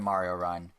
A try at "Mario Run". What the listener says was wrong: It sounded like you said Hun.